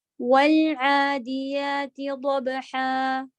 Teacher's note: لام تھوڑا اپنا ٹائم لیتا ہے، اس کو جلدی نہیں کریں گے نہیں تو قلقلہ آ جائے گا · واو کے لیے ہوٹ گول، عین حلق کے بیچ کے ساتھ، اور یہ کھڑا زبر ہے یعنی الف مدہ ہے